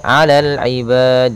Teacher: kalau kita waqaf maka di sini ada bacaan mad arid lisukun, yaitu kita memanjangkannya boleh 2 harakat, boleh 4 harakat, boleh 6 harakat.